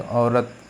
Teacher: कंठोष्ठ यानी कंठ और ओष्ठ दोनों का प्रयोग होता है